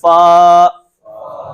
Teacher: فا کو ادا کرتے وقت اوپر والے دانت نچلے ہونٹ کے ساتھ لگتے ہیں